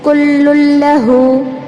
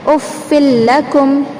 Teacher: لام کو لام میں ملا رہے لیکن غنہ نہیں کرنا ہے، آواز کو ناک میں نہیں گھمانا ہے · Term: ادغام بلا غنہ